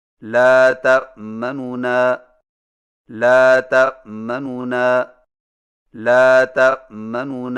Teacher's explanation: نونوں سے پڑھیں، لیکن پہلے نون کی پیش کو جلدی سے پڑھیں، یعنی اس طرح لا تأمنون، لا تأمنون، لا تأمنون۔ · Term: اختلاس